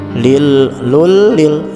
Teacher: dimasukkan bunyi huruf lam dan dihilangkan bunyi tanwinnya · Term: idgham bila gunnah